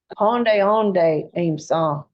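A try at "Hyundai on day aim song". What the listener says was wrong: That's good.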